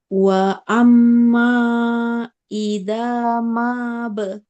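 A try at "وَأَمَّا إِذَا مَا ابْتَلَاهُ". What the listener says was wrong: Manya pendek.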